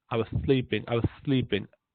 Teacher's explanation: Lisp کا مطلب یہ ہے کہ سین بھی بولتے ہوئے ذرا زبان کو آگے لگاتے ہیں، زبان کی یہ دانتوں کی نوک پہ